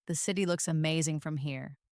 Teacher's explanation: Feel how looks amazing flows together smoothly almost like a single word.